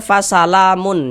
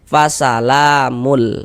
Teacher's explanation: kita masukkan ke huruf lam bunyi tanwinnya. Jangan dibaca fasalamun, jangan.